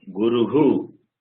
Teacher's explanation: The visarga takes the sound of u.